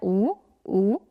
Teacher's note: वर्तुल जिसके उच्चारण के समय हमारे होठ गोल हो रहे हैं